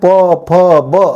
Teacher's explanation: लेकिन अपना जो हिंदी वर्णमाला का फ है, तो बिना ओट को सटाए प फ ब नहीं कह पाएंगे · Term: ओष्ठ वर्ण